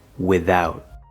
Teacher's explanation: This TH in without can also be voiced.